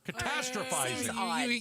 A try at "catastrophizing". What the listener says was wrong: The emphasis on the wrong syllable.